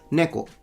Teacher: this one is an atamadaka word, so it goes from high to low